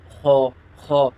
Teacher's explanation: حلق کے اوپر والے حصے سے ادا کرنا ہے، ایسے خو، خو۔